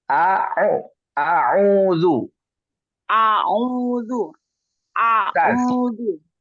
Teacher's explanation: A-nya tidak ada tekanan ya. Mengalir saja.